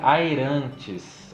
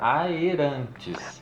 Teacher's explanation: Umas pouquíssimas exceções que a gente tem do AE, que é hiato. Ou seja, que separa as duas sílabas